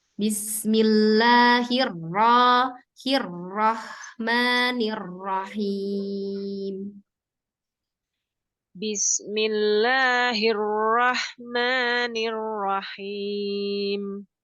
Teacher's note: Roh, dia dari pangkal ya. Pangkalnya naik ketika ro tebal.